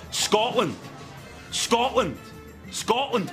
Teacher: Not even a t sound in there, just an Scotland.